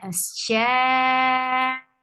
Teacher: So mad muttasil wajib. You have to make it 4 counts long. Sha. And when you will stop, you will create number on hamza.